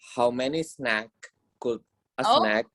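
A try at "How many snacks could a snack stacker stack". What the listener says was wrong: I told you, remember your S's. Snacks.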